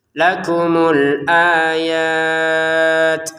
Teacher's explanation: Huruf ta-nya keluarin nafas sedikit.